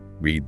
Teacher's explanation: In the present tense, read rhymes with need or seed because it has that long e